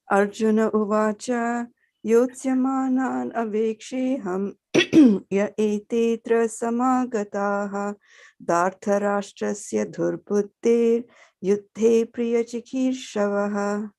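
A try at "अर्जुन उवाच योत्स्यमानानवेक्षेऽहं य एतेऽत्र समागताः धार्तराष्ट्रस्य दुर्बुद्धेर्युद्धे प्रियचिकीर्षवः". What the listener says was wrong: Very nice.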